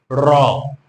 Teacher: একটু কম্পন করে যেন এই ধ্বনিটিকে উচ্চারণ করতে হচ্ছে · কারণ এই বয়শূন্য ধ্বনিটা উচ্চারণ করার সময় আমাদের যেন একটু কম্পন সৃষ্টি হয় মুখ বিবরের মধ্যে, সে কারণে এটাকে আমরা বলবো কম্পিত। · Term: কম্পিত ধ্বনি